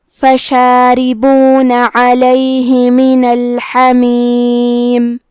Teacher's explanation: را کے نیچے زیر ہے، یہاں را کا حکم ہے ترقیق، تو ہم حرف را کو پتلی آواز میں پڑھیں گے۔ کلمت علیہ میں عین کی ادائیگی حلق کے درمیان والے حصے سے ہے۔ کلمت الحمیم میں حرف الحا ہے، حا کو ہم حلق کے درمیان والے حصے سے پڑھیں گے۔